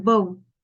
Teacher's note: it is also bilabial sound, which means we need to use both of our lips to articulate the sound. · And then we have the b sound, as in bow. That is a voiced sound because when you make it, you can feel the vibration on your throat. It is also a plosive sound.